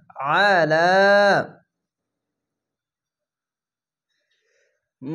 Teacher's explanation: আলা, খার যাবার এক আলিফ টেনে পড়বেন। আইনটিকে মোটা করে গলা চিপে পড়বেন। আইন যাবার আ, লাম খার যাবার লাম, আলা।